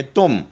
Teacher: من واحد فادع لنا ربک یخرج لنا مما، تن ہے لیکن تن پہ چھوٹا میم ہے تو میم جزم پڑھیں گے، نون جزم نہیں پڑھیں گے ، تن کی بجائے پڑھیں گے تم، مما تنبت الارض، مم،